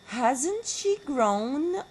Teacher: The most characteristic type is a negative yes/no question with a falling instead of rising tone. · It has a falling tone unit, not a rising one.